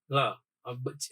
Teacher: લ ના ઉચ્ચારણ વખતે જીભનો આકાર ઊંધા નળિયા જેવો થાય છે. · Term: પાર્શ્વિક વર્ણ